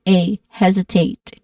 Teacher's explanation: And the last syllable, tate, there's a diphthong sound, A.